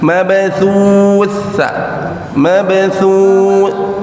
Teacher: jadi sa-nya sa ya, ujung lidah ke 2 gigi seri